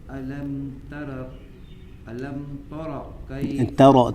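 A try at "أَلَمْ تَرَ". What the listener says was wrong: ترا صحیح, پہلے صحیح پڑھا تھا آپ نے. تا کو باریک پڑھیں گے, را کو موٹا پڑھیں گے. علم ترا, ہاں یہ تا کو موٹا نہ پڑھیں, تا موٹی نہ کریں. ہاں تا تو آپ تا پڑھیں گے, را کو موٹا پڑھیں گے.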